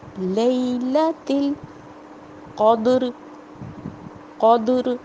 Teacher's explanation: قاف موٹا ہوگا، دال پہ جزم آئی تو قلقلہ ہوگا۔ ہم نے پڑھا تھا 5 حروف پہ قلقلہ ہوتا ہے، قاف، طا، با، جیم، دال، تو دال کی آواز ہلے گی، ٹھیک ہے، پلٹے گی۔